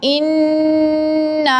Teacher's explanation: اب یہاں نون مشدد ہے، نون مشدد کے اوپر ہم غنہ کریں گے، یعنی کہ 1 الف کی مقدار ناک میں آواز لے کے جائیں گے